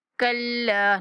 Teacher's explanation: لام شدد ہے اور 1 سیکنڈ تک لمبا کریں گے